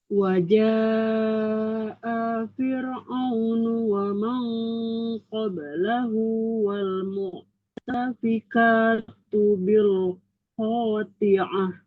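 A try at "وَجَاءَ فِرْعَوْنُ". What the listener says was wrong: Jadi V-nya ini ketemu ro-nya tarkik ya. Jadi fir ya. Waja'a fir. Iya, jadi bukan firo, tapi fir'aun. Fir'aunu.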